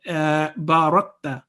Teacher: There is no jerking sound on kaf. Barakta would be wrong.